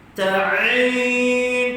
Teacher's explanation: Ta'in, tekan pada pertengahan kerongkong. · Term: huruf ain